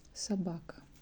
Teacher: O is not stressed. That's why we pronounce it like sabaka